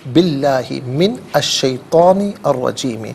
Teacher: بی اللہ، با کے نیچے زیر، اسے اس میں اللہ کی حرف لام کے ساتھ ملائیں گے، درمیان میں سے الف یعنی حمزہ کو حذف کریں گے. اس میں اللہ کی حرف لام کو یہاں باریک کر کے پڑھیں گے، اس لیے کہ ما قبل با کے نیچے زیر ہے.